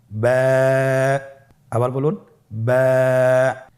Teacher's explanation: বা হরফে টান হবে, এক আলিফ টান।